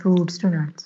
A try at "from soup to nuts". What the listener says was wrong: From soup to... No, it's not fruits. It's soup. Soup.